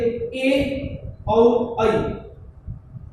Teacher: जब हम ए वर्ण का उच्चारण करते हैं तो कंठ से भी आवाज निकलती है, कंपन होता है, और तालु में भी कंपन होता है, जैसे कंठ में और तालु में, ऐ में भी ये स्थिति होती है, इसलिए कंठ तालु कहते हैं। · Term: कंठ तालु वर्ण